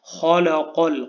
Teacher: اب اس میں خا کو ہم نے پر پڑھنا ہے، موٹا کر کے پڑھنا ہے